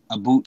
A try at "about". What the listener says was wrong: It's a boat. It's more like oat in a boat, not oot in a boot. Pronounce things like that, right? It's pronounced.